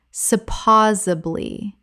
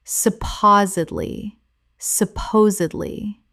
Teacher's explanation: four syllables with the stress on the second. The D must be pronounced.